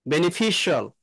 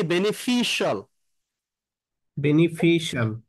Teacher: ফির উপরে বেনিফিশিয়াল, stress হবে